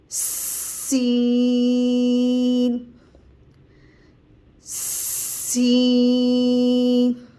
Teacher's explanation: سین میں بھی زبان اپنی ہی جگہ پر رہے گی، صرف دونوں دانتوں کو اوپر اور نیچے کے دانتوں کو ملا کر سیٹی سختی سے ادا کریں گے.